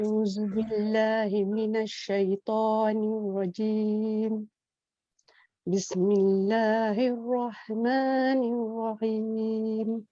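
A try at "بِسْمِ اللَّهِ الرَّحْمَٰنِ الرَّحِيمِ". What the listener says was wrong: Haknya kasih pedas lagi sikit.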